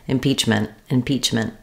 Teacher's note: I'm not always saying impeachment with a burst of air I may use a stop T here instead impeachment impeachment it'll just sound like a very short N I · It's a syllabic N. So I go right from my m to my n. And then I do have a T sound, but I don't always let it out.